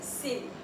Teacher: The flat T becomes an R. It's pronounced an R because of the vowel sound between the E in city and the E, the Y sound, the vowel Y sound.